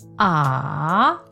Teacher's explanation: The third tone is ah. To say this tone, your voice must go down, then up, like a train going over a valley.